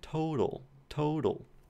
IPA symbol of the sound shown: t